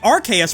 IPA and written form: 'ɑrkeɪəs (Arceus)